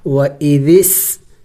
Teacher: سین سیٹی والے حروف میں سے پڑھتے وقت منہ سے سیٹی کی آواز نکلنی چاہیے